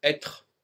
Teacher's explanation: pour prononcer être faut pas s'appuyer sur une voyelle le E ici n'est pas une voyelle il faut laisser la la consonne exister en tant que telement